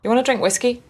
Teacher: want to becomes wanna